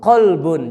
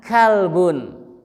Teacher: Qab itu keluarnya dari aqsal lisan wa ma fauqahu minal hanakil a'la, qab, aka. Di bawahnya asfala aqsal lisan, beda dikit, beda tipis.